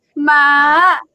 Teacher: it's like you go over to the top of your vocal range, and you just stay there. Don't come down. So it's ma like that. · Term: high